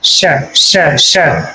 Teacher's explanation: तालव्य शकार, सीटी वाला सा बोला जाता है इसको, सीटी वाला सा, श श श। इसमें से क्या है, विसिल टाइप में आवाज आती है शुरुआत में।